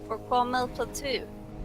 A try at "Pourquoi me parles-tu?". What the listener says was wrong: No, you're like pronouncing that weird. Okay, it's not Malpel. It's Mapel.